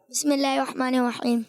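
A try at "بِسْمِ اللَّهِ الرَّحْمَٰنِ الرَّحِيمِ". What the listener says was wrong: تھوڑا سلو پڑھیں گے، ٹھہر ٹھہر کے پڑھیں.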